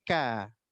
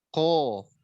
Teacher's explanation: Bunyinya o, enggak boleh monyong. Bibirnya enggak boleh monyong. Dibuka aja.